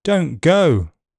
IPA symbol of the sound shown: əʊ